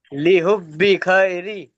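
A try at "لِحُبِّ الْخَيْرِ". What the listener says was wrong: লি হুব বিল খৈরি, বার সাথে লামটাকে ধরতে হবে।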